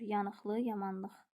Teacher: İki sözdə də vurğu sonunca düşür.